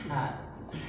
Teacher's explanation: perhatikan huruf ha dari tengah tenggorokan